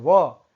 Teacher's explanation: जिसका उच्चारण दंत और ओष्ठ दोनों से हो वह केवल एक ही है, वह है व, इसको दंतोष्ठ वर्ण कहते हैं।